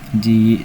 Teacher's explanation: Ji cara bacanya dipanjangkan dua ketukan. Jadi perlu diingat kalau ya sukun itu matobai-nya pasangannya dengan kasroh, huruf sebelumnya harus kasroh seperti ini.